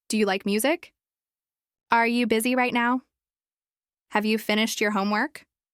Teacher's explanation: the intonation typically rises at the end. That upward tone signals that you're asking something and expecting a yes or no answer.